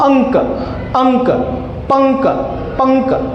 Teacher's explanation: जब हम अनुस्वार का प्रयोग करते हैं यानी कि इस बिंदी का प्रयोग करते हैं तो हमारे अंदर की जो श्वास वायु है वो सिर्फ और सिर्फ हमारे नाक से जाती है। सिर्फ नाक से जाती है। · जब मैं इसका उच्चारण करता हूं, तो मेरा मुंह बंद रहता है, लेकिन मेरे नाक से जो है वो क्या जाती है, हमेशा ध्वनि जाती है। · तो जिस वर्ण में जिस मात्रा में ध्वनि सिर्फ नाक से जाए, सिर्फ नाक से जाए वहां होगा आप लोगों का दैट इज अनुस्वार। इसमें ध्वनि सिर्फ और सिर्फ आपके नाक से जाएगी। मुंह से नहीं जाएगी।